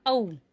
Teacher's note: ओ और औ दोनों वर्ण कंठोष्ठ से उच्चारित किए जाते हैं